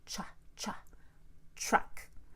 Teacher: To make the CH, I'll have to round my lips and use the middle of the tongue touching the middle of the top of my mouth. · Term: CHR